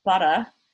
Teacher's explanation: i also don't pronounce the r at the end of the word so i end up with butter and people are like that